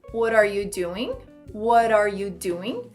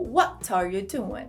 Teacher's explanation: Esse T do what acaba virando um R de what are para what are.